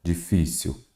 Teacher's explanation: a sílaba tônica é o fi